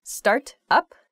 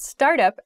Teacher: when i say the phrasal verb start up there's a disconnect between the words